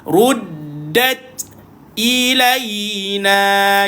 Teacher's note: Tahan dan lepaskan dal. Matikan ta, angin perlu dikeluarkan. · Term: angin keluar